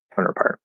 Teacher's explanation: So it gives us four possible ways to say it, but there's only one most likely way, which is without the T's. Well, without the first T and a stop second T